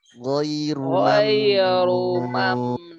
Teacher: Huruf nunnya tipis, ro-nya tebal.